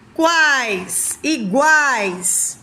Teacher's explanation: três vogais juntas semivogal vogal e semivogal sai tudo pela boca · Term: tritongo